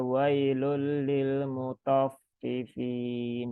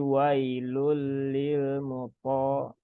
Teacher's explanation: dia diucapkan tidak dengan membulatkan bibir ya, tetapi dengan menaikkan pangkal lidah. Jadi jangan dibaca wailul lil mutaffifin.